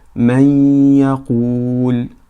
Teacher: As you hear, we merge the noon or tanween into the letter ya. So we say may, may. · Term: idgham bi ghunna